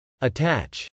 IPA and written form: ətˈætʃ (attach)